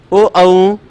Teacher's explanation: ओ औ इन दोनों वर्णों का उच्चारण स्थान, इन दोनों वर्णों का उच्चारण स्थान कंठोष्ठ होता है, यानी कंठ और ओष्ठ से ध्वनि निकलती है। ओ देखो यहां भी लोड पड़ता है और होठ भी गोल होते हैं।